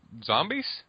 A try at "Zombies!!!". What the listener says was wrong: Then you're not saying it correctly. You're not pronouncing that right. It has like 3 of them. You have to say it all excited.